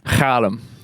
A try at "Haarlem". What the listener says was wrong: There's no G in there. Haarlem. Haarlem. There's no G in Haarlem. It's an H.